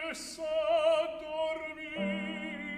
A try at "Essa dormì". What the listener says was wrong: Stay a little longer on the D. Okay, so this is my cue to give a 30-second tutorial on double consonants in Italian, which I give every time.